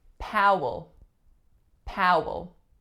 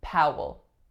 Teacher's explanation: Same vowel sound as in Howard, so it's ow. And then the second vowel is a schwa, Powell. This L at the end is not a light L, but a dark L.